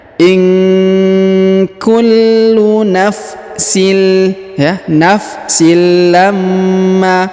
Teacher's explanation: huruf sinnya menghilang melebur ke huruf lam yang bertasdid kita tahan dan kita tekan